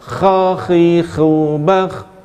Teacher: Kha keluar, ada ngorak tapi tidak banyak. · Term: huruf kha